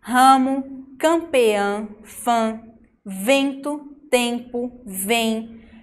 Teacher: Percebam que quando a gente fala essas palavras, o som sai pelo nariz. É como se a gente estivesse usando mais força para falar pelo nariz. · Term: dígrafo nasal